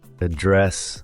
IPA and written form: əˈdrɛs (address)